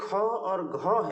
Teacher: तो जो ख और घ है यही है महाप्राण, जिसमें प्राण ज़्यादा निकले। प्राण मतलब वायु, ठीक है ना।